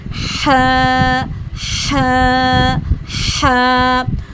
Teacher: हलक के दरमियान से अदा होता है, लेकिन ये मजबूत आवाज़ से अदा होगा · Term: मिडल थ्रोट